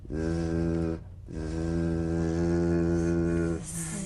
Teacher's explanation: The Z vibrates in that very small open space between the tongue and the upper teeth. Right in here. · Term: voiced S sound fricative